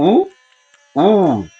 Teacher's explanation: हम दीर्घ उ बोलते हैं तो उससे डबल समय लगता उ उ और जब हम प्लुत बोलते हैं तो उ उ